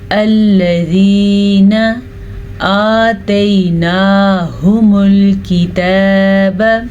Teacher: हमज़ा के ऊपर और लाम के ऊपर ज़बर है, तो हम इन दोनों को लंबा किए बगैर पढ़ेंगे